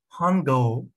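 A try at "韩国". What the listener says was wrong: Gao değil, Guo.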